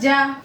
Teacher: जीम हुरूफ मुस्तफीला में से है, बारीक पढ़ेंगे।